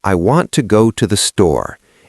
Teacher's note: In natural speech, we stress store because that's the destination.